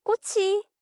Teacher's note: kkot becomes kkochi and the t comes back. Kkochi, not kkodi.